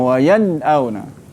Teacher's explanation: Matikan nun baru kita boleh sebut huruf hamzah. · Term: izhar